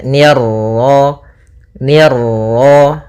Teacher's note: ni tipis ketemu ro yang ro tafkhim ro tebal · Nah, kemudian pada lafaz ma ada bacaan mad tabi'i yaitu fathah bertemu alif, ni tipis ketemu ra yang ra tafkhim, ra tebal